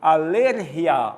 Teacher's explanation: Mas quando eu digo em espanhol, alergia, a tônica é ler.